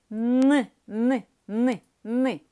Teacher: короткий звук твердий приголосний н